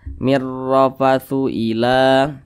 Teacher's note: ra itu dibaca tebal, sehingga pangkal lidah itu naik ke atas.